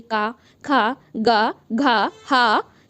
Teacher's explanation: ये आपके कंठ मतलब गले से आवाज निकल रही है